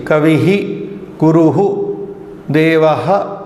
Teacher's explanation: the breath is exhaled, it is let out, and you feel the breath coming out. It is called visarjaniya. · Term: visarga